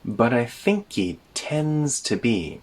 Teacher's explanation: We connect the think he together, and again when we speak quickly, the h sound in he gets removed.